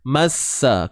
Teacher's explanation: Untuk sin bersabdu ni, massa, tak perlu keluar hujung lidah.